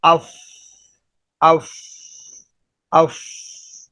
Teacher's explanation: فا کہنے کے بعد اس کی ہوا خارج ہو رہی ہے منہ کے اس کناروں سے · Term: ہمس